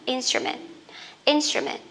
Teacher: Âm ơ đọc rất là nhanh nha lớp mình nhá